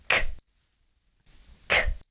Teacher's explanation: So the unvoiced consonant sounds we just did were k, where the air is blocked by the back of the tongue touching the soft palate at the back, and then releasing the air through the mouth